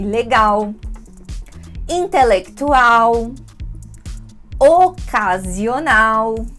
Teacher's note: Nossa pronúncia de l no fim da palavra né que vai ter esse som de u